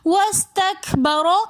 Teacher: ابا، واستکبر میں واو اور سین کے درمیان الف ہے تو اس الف کو ہم نہیں پڑھیں گے بلکہ واو کو سین کے ساتھ ملا کر پڑھیں گے۔ واستکبر، رو کے اوپر زبر ہے تو اس رو کو ہم موٹا پڑھیں گے۔